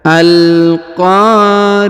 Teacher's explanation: huruf qo ya dibaca panjang dua harakat karena di depannya terdapat Alif